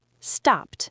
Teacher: Ends in an unvoiced p. Add a t.